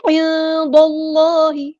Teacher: کیونکہ دال پر زبر آئی ہے، عند اللہ، لیکن یاد رہے دال کو ہم نے یہاں پر باریک پڑھنا ہے، لیکن اللہ کا جو لام ہے اس کو پورا ادا کرنا ہے